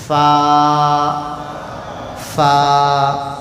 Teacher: خالی دانت ہونٹ کو لگانا، یہ 2 ہونٹ نہیں ملانا، اگر 2 ہونٹ ملا دیے تو پھا ہو جاتا، پھر وہ 2 ہونٹ الگ رکھنا، نیچے کے ہونٹ کے اندر کے حصے پہ سامنے کے 2 بڑے دانت کے کنارے، فا، فا۔ قاف، زبان کی جڑ اوپر کے تالو کے ساتھ لگانے سے نکلتا ہے۔